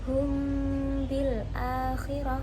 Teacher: syafawi yaitu Apabila ada mim sukun bertemu dengan huruf ba maka mim ini disamarkan dengan gunah dengan panjang tiga harakat · mim ini disamarkan dengan gunnah dengan panjang 3 harokat atau 1,5 alif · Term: ikhfa syafawi